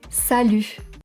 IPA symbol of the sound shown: y